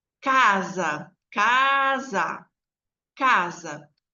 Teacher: o primeiro a é mais forte que o segundo a Então esse a de k k de casa ela é uma vogal tônica e aquele último a é uma vogal átona